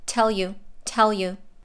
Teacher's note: u is pronounced fast u and the l from tell links to the you